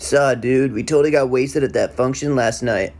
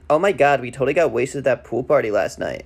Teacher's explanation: They both speak in a glottal fry with the same kind of breathy articulation. They both have an airy rhythm and use words like a lot.